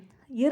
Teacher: நாவினது நுனி துடித்து அதாவது துடித்துனா அதிர்ந்து பொருந்த ரகரம் பிறக்கும் ர் அப்படின்னா மேல்வாய் பற்களுக்கு சற்று மேலான பகுதியின் கீழ் நாவோட நுனி துடித்து பொருந்த ரகரம் பிறக்கும்